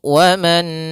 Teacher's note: sehingga di sini ada nun sukun bertemu dengan huruf nun maka Nun yang pertama dimasukkan kepada Nun yang kedua dan ditahan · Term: idgham bi gunnah